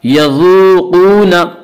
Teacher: وا مدہ کو ایک الف کے برابر کھینچ کر پڑھیں گے. یذوقون قاف کو پر پڑھیں گے.